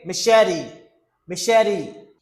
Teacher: You see the T sounds like D. This is a flat T.